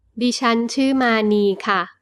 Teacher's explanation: The polite particle for female speakers ค่ะ with a falling tone is used for a normal statement.